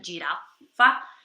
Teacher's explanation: a girafa tem 2 Fs e ela é pronunciada um pouquinho mais comprida